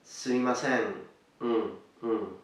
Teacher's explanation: notice that the N at the end is nasalized is nasal you pronounce it with your nose